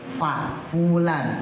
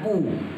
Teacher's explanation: atas Fa Fulan bukan pu bibirnya engak nyentuh dua-duanya muulan muflihun bibir bawah digigit gigi atas